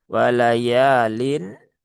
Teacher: Lamnya ada alif setelah fathah. Maka dibaca panjang ee dua harakat ya.